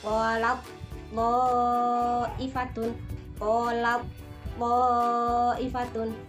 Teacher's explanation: cara membacanya huruf ta itu seolah-olah tidak ada, jadi langsung berbentuk ke huruf to. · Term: idgham mutajanisain